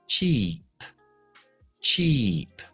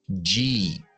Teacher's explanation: La cha no lleva voz, pero hay otro en inglés que sí lleva voz.